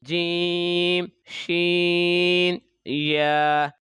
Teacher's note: تو یہ 3 حروف شاجریہ زبان اور تالو اس کے درمیان سے ان کو ادا کیا جاتا ہے